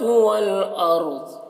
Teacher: والارض، اب یہاں پہ دیکھیے را ساکن سے پہلے والارض، ٹھیک، والارض، را کو پر پڑھیں گے اور ضاد کو بھی پر پڑھیں گے